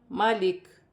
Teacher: وقف کی صورت میں زیر گر جائے گی اور کاف ساکن ہو جائے گی۔